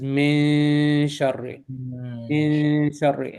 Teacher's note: And your tongue, when you say the noon, you will not touch the top of your mouth. It's an almost noon. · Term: empty noon